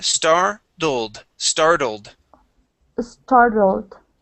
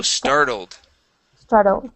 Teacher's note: this T here uh we treat like a d and the English D feels like the Spanish R